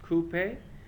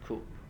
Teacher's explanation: usually pronounced with two syllables in the UK as coupe and one syllable in the US as coupe